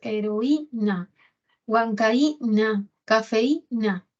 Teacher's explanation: la cerrada va a tener la mayor fuerza de voz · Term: hiato acentual